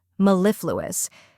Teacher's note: which sounds like the me in metal or Melon next is LIF which rhymes with stiff and is stressed then comes Lou which sounds like the L in blue finally